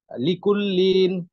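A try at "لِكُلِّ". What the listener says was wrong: টান হবে না কোনো।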